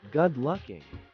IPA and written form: ɡʊd ˈlʊkɪŋ (good looking)